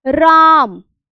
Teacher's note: रा के उच्चारण में हमने 3 गुना का समय लगा दिया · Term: प्लुत स्वर